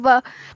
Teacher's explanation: तो वकार का उच्चारण स्थान होता है दंत और ओष्ठ मिलकर होता है।